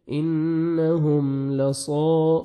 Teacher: صاد کو موٹا کر کے پڑھنا ہے، اور الف مد ہے 1 سیکنڈ، صا کو کھینچنا بھی ہے